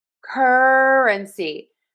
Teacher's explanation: I am stressing syllable number one. Cur cur completely reducing unstressing my uh my schwa syllable.